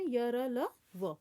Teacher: इसी प्रकार अंतस्थ व्यंजनों का उच्चारण करते समय जिह्वा पूरी तरह मुख के किसी भी भाग को स्पर्श नहीं करती।